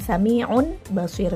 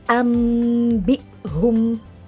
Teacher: nun atau bunyi n-nya menjadi bunyi mim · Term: iqlab